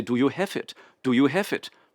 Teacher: the placement is very far forward lips and teeth which is where our German lives